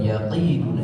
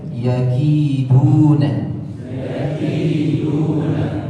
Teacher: Jadi bukan yaqiduna tapi yaki. Ki ada nafas yang harus diakhirkan dan dia sifatnya tipis. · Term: huruf kaf